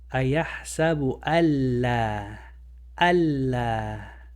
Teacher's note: So you're not going to say an, you're going to say al. A, L, and then you continue. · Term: idgham